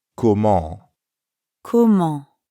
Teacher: Comment ends in the nasal sound en. To pronounce that sound, first say ah while dropping your jaw a bit.